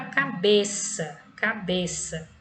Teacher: é a sílaba tônica né pronunciada com mais intensidade mais força é a penúltima por isso que ele é uma paroxítona